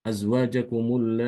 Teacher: Imam albazi dia membaca dengan enam harakat